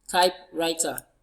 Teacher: We have our stress on type, the first syllable.